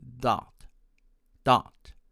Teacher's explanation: my friends from india tend to pronounce it as dot dot with the consonant of d or t or a sound between them